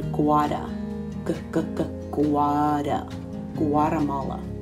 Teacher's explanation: that t becomes a little bit of a d sound